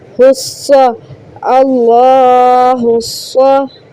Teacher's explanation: ये अलिफ और लाम नहीं पढ़ेंगे, स्वाद के साथ हा को मिलाएं